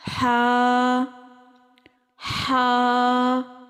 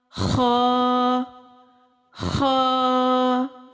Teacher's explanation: بظاہر دیکھنے میں ہا اور خا دونوں ملتے جلتے حروف ہیں، لیکن ان کی آواز اور ان کے مخارج میں فرق ہے۔ ہا نرم حروف میں سے ہے اور خا خراش والے حروف میں سے ہے۔